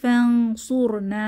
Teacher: এখানে নুন সাকিনের পরেও সোয়াদ এসেছে, ইকফা হবে। ফানসুরনা এক আলিফ টেনে পড়ব।